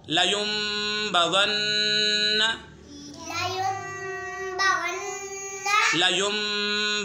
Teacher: यानी नून साकिन या तनवीन के बाद हर्फ बा आ जाए तो इकलाब होगा। यानी नून साकिन और तनवीन को मीम से बदल कर इक़फ़ा करें, यानी गुन्ना करके पढ़ेंगे